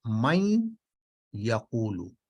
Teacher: یہ دراصل نون جو ہے یہ مل جاتا ہے یا میں، اور یہ نیزلائزیشن چونکہ ہوتی ہے، غنہ کا مطلب ہے نیزلائزیشن ناک سے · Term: ادغام بغنہ